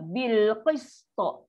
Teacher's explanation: Jangan pula to ni sebut rendah jadi macam ta. Sebab kan makhraj dia sama belakang gigi kapak.